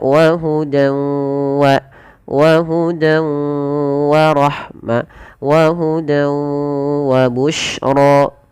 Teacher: Nah, di sini idgamunah juga bisa kita namakan dengan idgam naqis ya. Idgham guna yang dia naqis tidak sempurna diidgamkannya masih menyelesaikan sedikit bunyi suara nun. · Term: idgham bi gunnah